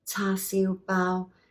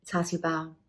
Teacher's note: it's all high tone for the tasu bow now bow again is like bun and the tasu is your